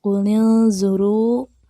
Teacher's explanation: Dan ada mad asli atau mad tobi'i karena setelah huruf berharakat doma terdapat huruf wau berharakat sukun dan dibaca 2 harokat · Yang pertama ada qulil zuru, terdapat 3 hukum tajwid. Ada ikhfa karena nun mati bertemu dengan huruf zo dan dibaca berdengung. Kemudian ada ro tafkhim karena ro berharakat doma dibaca tebal.